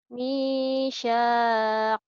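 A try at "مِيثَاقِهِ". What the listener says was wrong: Bukan shin tapi sa ujung lidah. Misa. Kayak cadar. Cadel. Mi-nya panjang, sa-nya panjang, hi-nya panjang. Ada yang 3 yang panjang.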